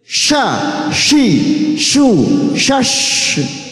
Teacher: Tafashi itu berhamburannya angin di dalam mulut.